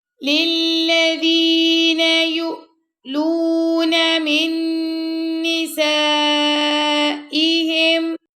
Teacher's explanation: یا پیش حمزہ یو، یہاں پہ ہم جھٹکا دے کے پڑھیں گے